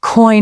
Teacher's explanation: For example, the word coin has a diff. It starts with an o sound and glides into an i sound